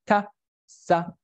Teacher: The tip of the tongue articulates with the edge, with the alveolar ridge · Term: alveolars